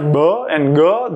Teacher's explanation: It rushes into you, giving implosives like [ɓ] or [ɠ] their characteristic gulping sound.